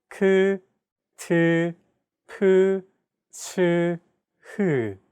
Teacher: Aspirated sounds are pronounced with a big burst of air, unlike plain sounds which do not have this quality. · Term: Aspirated consonant sounds